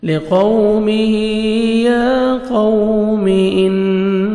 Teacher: لِقَوْمِهِ، واو مدہ ہے، واو لین ہے، لپس کو آپ نے راؤنڈ میں لے کے جانا ہے، نرمی سے ادا کریں گے، قاف کو آپ نے موٹا کر کے پڑھنا ہے، ہا کھڑا زر ہے، ایک الف کے برابر، یعنی 1 سیکنڈ آپ نے کھینچنا ہے۔